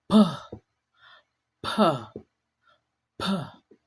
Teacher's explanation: you build up a little air pressure behind your lips, then you release them with a quick and sharp pop.